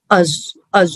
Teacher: Tip of the ٹنگ کا جو upper part ہے نا اوپری حصہ وہ اس کو دانتوں کا ایج لگتے ہیں، دانتوں کے کنارے جو سینٹرل انسائزز ہیں نا اپنے، ہاں اس کے کنارے لگتے ہیں، دانتوں کے کنارے ٹچ ہوتے ہیں، اور اس سے ادا ہوتا ہے زو.